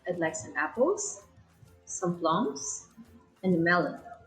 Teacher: so it's the up up down intonation